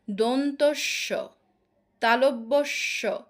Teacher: উচ্চারণে শ্বাস অনেকক্ষণ ধরে রাখা যায় এবং শীষের মত আওয়াজ হয়। দন্তস্য তালব্যস্য এটা সময় শ্বাস অনেকক্ষণ থাকে এবং শীষের মত একটা আওয়াজ হয়। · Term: শীষ ধ্বনি